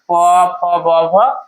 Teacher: पहले दोनों होठ सटेगा, उसके बाद ही यह आवाज बाहर निकलते हैं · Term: ओष्ठ